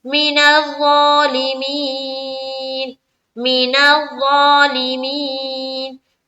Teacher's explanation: मिनज़ ज़ा में खींचेंगे क्योंकि खड़ा जबर है, ज़ौ लाम को जल पढ़ेंगे, ली मी को फिर खींचेंगे चूंकि यहाँ पर या मद्दा हो रहा है, या साकिन से पहले ज़ेर है।